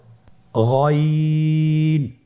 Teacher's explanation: গইনের মাখরাজ কোন জায়গায় আপনারা স্ক্রিনে দেখতে পাচ্ছেন, ছবিতে দেখা যাচ্ছে। গইন হরফটি উচ্চারিত হয় কণ্ঠনালীর শেষ ভাগ হতে।